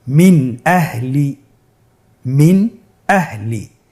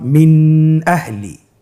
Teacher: তাহলে আমরা এখানে নুন সাকিনকে স্পষ্ট করে পড়ব, গুন্না ছাড়া পড়ব। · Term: ইজহার